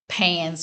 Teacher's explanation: That's voiced S right there because N is vibrating. So we know that Z sound is going to be actually a voiced S.